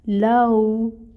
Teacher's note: لین کو نرمی سے پڑھا جاتا ہے۔ واو ساکن سے پہلے اگر فتحہ آ جائے تو لین کا قاعدہ ہوتا ہے، ٹھیک ہے؟ تو لو لو، پھر تا ہے، باریک ادا ہوگا۔